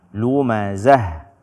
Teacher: tak marbutoh ketika kita berhenti padanya baik dia Fatah kasroh dhomah ataupun fathatain dhommatain atau kasrotain dia dibaca dengan ha